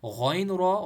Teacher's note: غین را، غین کو موٹا پڑھیں گے، را کو موٹا پڑھیں گے